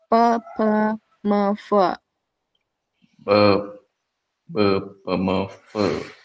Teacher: Dia vokalnya dari ee pengucapannya dari bibir gitu antara bibir